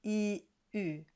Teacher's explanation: Once you have that E, you simply round around the E. It's as if you were trying to hang on to a very narrow straw. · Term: U sound